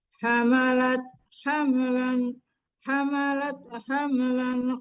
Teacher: Kalau Ibu lannya itu tidak dengung ya. Yang berdengung itu famnya ya. Kalau lan itu izhar harus jelas e tanwinnya dibaca hamalat.